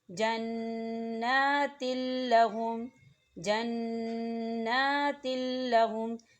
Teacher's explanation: دیکھیں تا کے نیچے تنوین ہے اور تنوین کے بعد لام آ رہا ہے، لام کے اوپر تشدید ہے اور لام جو ہے حروف ادغام میں سے ہے، تو یہاں غنہ نہیں ہوگا. ہم تنوین کو جو ہے لام کے اندر مدغم کریں گے لیکن غنہ ہرگز نہیں کریں گے